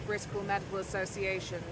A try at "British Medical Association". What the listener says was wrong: Go again, you said Britical. British. British Medical Association. You said Britical.